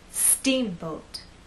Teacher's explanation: the second part to be softer let's try that steamboat now we also need to make that first part longer and then the second part will be shorter